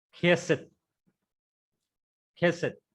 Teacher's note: Because that chet is a strong guttural, so the sound should come out of the throat.